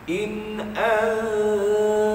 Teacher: masa dengung an itu, ujung lidah tu dekat dengan pangkal gigi kita. Tak sentuh, dekat saja. Jadi akan hasil bunyinya in antum.